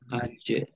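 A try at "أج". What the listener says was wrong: Jangan aj. Jangan aj. Itu hames itu kalau aj. Tapi aj, aj, ij, uj, aj. Lihat di sini cara bacanya, latihannya lihat. Perhatikan. Jaji jubaj. Aja. Aja. Aja. Jangan jangan aja. Aja. Lidah tengah, ya. Lidah mana? Lidah tengah wasatul lisan ma'a ma yuqabiluhu minal hanakil a'la.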